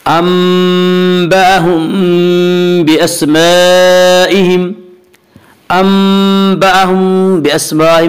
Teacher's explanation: انبأهم باسمائهم، انبأهم باسمائهم میں اخفاء شفوی ہوگا۔ اس کا قاعدہ یہ ہے کہ میم ساکن کے بعد اگر بائے تو وہاں پہ اخفاء شفوی ہوگا.